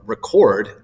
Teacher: So when we use the noun form of record, RE is stressed. When we use the verb form, record, the cord is what's stressed, right? We have the little syllable right here in front of it.